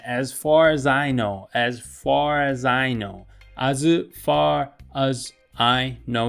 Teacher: で、本当によく使いますね。この▁as▁far▁as▁I▁know▁ってこうなるんですよね。▁as▁far▁as▁I▁know,▁as▁far▁as▁I▁know,▁as▁far▁as▁I▁know▁じゃなくて▁as▁far▁asfar▁as▁ってここでやっぱりリンキングが起きるんですよね。この最後の▁r▁の発音▁rrr▁という子音の発音と、次のこのねええという母音、やっぱ子音で終わって母音で始まってるので、ここが自然につながって▁far▁っていう▁r▁ 最後▁r▁ってベロをこう中でねちょっと持ち上げて▁rrrrr▁ってなった状態からええという母音につながるんですよ 。▁R▁as▁far▁as▁みたいな、▁far▁as▁ね、▁as▁far▁as▁で、ここもやっぱ▁Z▁のこの発音記号ですね。▁C▁の発音記号から次▁I▁という、まあこれ二重母音なんですけど、に▁C▁音母音になってるので、ここやっぱリンキ